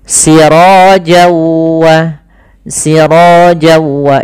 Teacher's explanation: Nah, kemudian ketemu waw, maka n-nya hilang, masuk ke waw, jadi waw-nya double. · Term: idgham bi gunnah